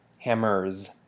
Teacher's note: hammers we you it takes on the lam morph Z hammers so this s makes a z sound